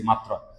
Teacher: এই র ফলা যদি শব্দের মাঝখানে অথবা শেষে থাকে, তাহলে যে বর্ণটার সাথে আছে ওই বর্ণটা দুইবার হয়ে যাবে।